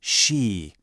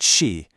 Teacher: It's not the flat sh sound we have in a word like she or she. It's a retroflex sound. That means the tip of your tongue has to curl back just slightly in your mouth.